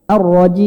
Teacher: Jimnya ini kan mad, Pak ya. Hidung jangan ikut campur.